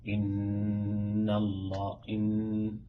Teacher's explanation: إتمام الغنة لازم نتمها حركتين مرتاحة